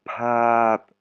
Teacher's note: ça se prononce pas f, ça se prononce avec de l'air qui sort après le p